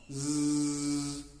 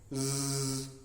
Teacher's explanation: You will find there is no vibration. Now z sound, zzz, and there will be a lot of vibration.